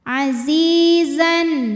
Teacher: karena ada Ya Sukun didahului kasrah maka huruf Zai panjang dua harakat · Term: Mad Thobi'i